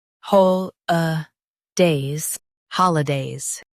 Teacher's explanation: Stress hol and keep uh days light.